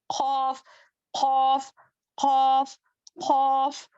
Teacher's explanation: जुबान की जड़ को छोटी जुबान के पीछे के हिस्से से लगाने पर खौफ अदा होता है।